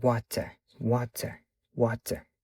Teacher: Xo'p, British accentda bo'lsa, ya'ni Buyuk Britancha aksentda T'ligicha qoladi va yaqqol T talaffuz qilinadi